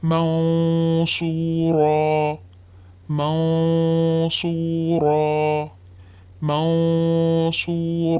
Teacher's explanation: Here after noon sakin, letter sad is present, so we have to do heavy ghunna.